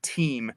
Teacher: I'm aspirating my T there because English tends to aspirate certain sounds at the beginnings of words. So like you wouldn't say team, you would say team, with a T.